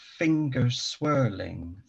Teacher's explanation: with the stress on the odd syllables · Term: trochaic meter